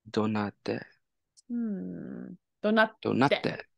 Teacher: Yeah, gotta make sure that glottal stop in there